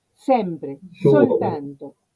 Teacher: todas las que vean al principio de palabra, esas son las S sin sonoridad